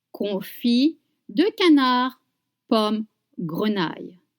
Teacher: don't pronounce the consonant at the end of confit and canard